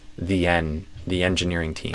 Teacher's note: it's N or the tongue tip N and a E vowel sound. Not a a, but a E N.